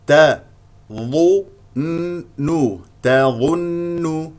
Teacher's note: الظاء مفخمه مرتبه ثالثه لانها مضمومه